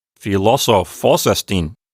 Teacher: So you went up twice in philosophos because there are two accents.